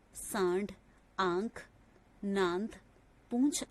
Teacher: इसके उच्चारण में हवा नाक और मुंह दोनों से दबाव के साथ बाहर निकलती है। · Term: अनुनासिक